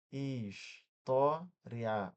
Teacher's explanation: Que que é de tongco crescente? Começa com a semivogal que é mais fraquinha e depois vai pra vogal